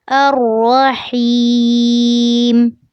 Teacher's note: آخری ورڈ الرحیم میں ہا کو یا سے ملاتے ہوئے اس کو لمبا کرنا ہے